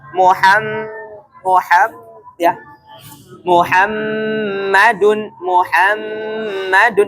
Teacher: suara yang keluar dari hidung ini 100% suara ini keluar dari hidung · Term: gunah